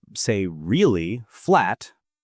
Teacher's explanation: say really flat and it sounds bored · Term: intonation